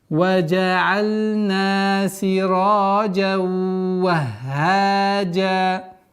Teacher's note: И при остановке танвин аннулируется, и долгота в размере двух огласовок появляется у нас.